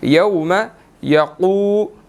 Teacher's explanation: क़ाफ को मोटा अदा करना है और इसके बाद वाव मद्दा है 1 सेकंड इसको लंबा करना है